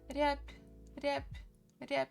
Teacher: So we write B, but basically when we pronounce it may sound as P a little bit.